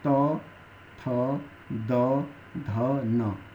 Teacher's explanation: अण इसके बाद अगला आता है दंत दंत की खासियत है बिना दांत के सहारे के आप इसको नहीं बोल सकते दंत में आता है त थ द ध न अर्थात हमारी